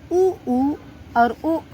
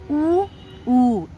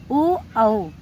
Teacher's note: जैसे हम ऊ और ओ औ को बोलते हैं तो हमारा जो ओष्ठ होता है, जो हमारा ओंठ होता है, वो गोलेकार शेप में हो जाता है, गोला बन जाता है।